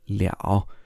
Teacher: this character can also sometimes be pronounced liao in the third tone